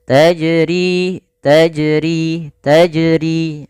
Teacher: bagaimana yang benar adalah dia tidak menambahkan hamzah dan juga dia dipantulkan. · R ada Mad thii ditandai dengan kasrah bertemu dengan huruf ya maka untuk panjang RI sendiri dua harakat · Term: qalqalah